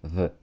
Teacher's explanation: с языком между зубов сказать в если нам нужен звонкий звук как в артикле the